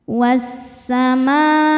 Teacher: Alif lamnya dinamakan dengan alif lam syamsiyah sebab alif lam menghadapi huruf syamsiyah yaitu sin. Cara bacanya alif lam lewatin, masuk langsung ke sin atau diidghamkan. Was-samaa. Ma hukumnya mad wajib muttasil karena mad tabi'i bertemu dengan hamzah dalam satu kata.